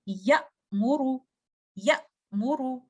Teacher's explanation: जब हमजा की आवाज निकाली तो एक नेचुरल थोड़ा सा गैप आता है हमजा के बाद मीम तक पहुंचने में। या मोरू, या मोरू, आप फील करते हैं कि हमजा के बाद आपकी आवाज एक तरीके से कट हो गई। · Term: शिद्दा का लेटर, शिद्दा